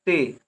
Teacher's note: ता के साथ ई का उच्चारण तो है लेकिन कम देर के लिए है